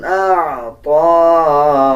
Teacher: اعطا، طا کے اوپر کھڑا زبر ہے، 1 سیکنڈ لمبا کر کے پڑھا جائے گا